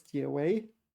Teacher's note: Third tone, second tone, if I'm right.